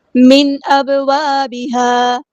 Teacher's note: با ساکن پہ کلکلا ہو رہا ہے، ہم نے اس کو آواز کو ہلانا ہے